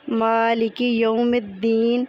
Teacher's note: اس میں میم باریک حرف ہے تو الف بھی باریک ہی پڑھا جائے گا۔ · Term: ترقیق